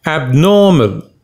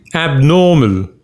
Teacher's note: the second syllable is stressed